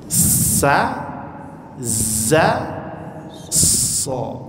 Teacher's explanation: Jadi di bawah dia, ujung lidahnya kena gigi serinya, kena pula daging di bawahnya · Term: makhrajnya